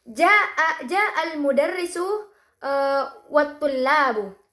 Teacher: jeda setelah kata al-mudarrisu membantu memisahkan dua bagian informasi dalam kalimat, sehingga pendengar dapat memahami maksud ujaran dengan lebih jelas.